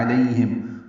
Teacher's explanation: عین شروع میں وسط حلق سے ادا ہوگا